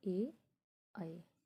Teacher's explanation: कंठ या मुंह और तालु से मिलकर जो उच्चारित हो उसे हम क्या कहते हैं? कंठतालु